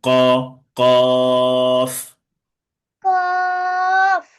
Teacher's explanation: কণ্ঠনালী একটু একটু চেপে পড়তে হবে আর কি, ধাক্কা দিয়ে ক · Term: মোটা আওয়াজে ক